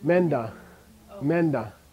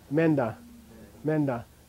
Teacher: So this is an open vowel sound, big fat vowel sound before prenasal. It's going to get very strong.